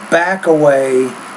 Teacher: And with the word back, I would say back away. Try to take the K and back and connect that to the first vowel of the next word.